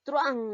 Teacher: aquí estamos viendo que la vocal abierta suena más. Por lo tanto, estamos hablando de un diptongo. Entonces la U y la A no se van a llegar a separar, sino se unen porque estamos refiriéndonos al diptongo.